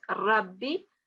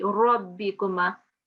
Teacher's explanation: Yeah, as I was telling the other students, don't pronounce as Rabbi, so don't make a fatah, round that fatah a bit in your mouth